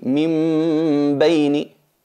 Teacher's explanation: hay que transformar la nun en una m porque está al lado del ba y salen todas de los labios Entonces es una manera de facilitar trasladarnos de la letra n · el caso del nun sakina minini se se pronuncia así minini transformamos la nun en una mim pero aplicándole la nasalización · la transformamos en una m totalmente Clara sino con con disimulación manteniendo la gunna manteniendo la nasalización y eliminando el cuerpo tanto de la n como de la m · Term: la transformación, transformar la nun en una mim